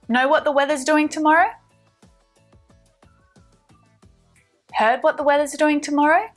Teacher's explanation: our intonation is going up to signal the question